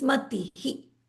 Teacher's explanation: So this is not Matiha. This is Matihi, because it's an E. The scent of E is going to rub off on the visarga.